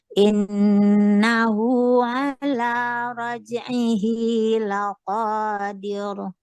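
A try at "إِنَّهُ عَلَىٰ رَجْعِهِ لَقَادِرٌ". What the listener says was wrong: Masih diro. Innahu. Bukan masalah tipisnya. Jangan dihidupkan. Diro. Itu hidup namanya. Innahu ala raj'ihi laqadir. Habis dir. Bukan dir. Dir dengan dir. Jadi dia habis, Bu. Laqadir. Jangan laqadir.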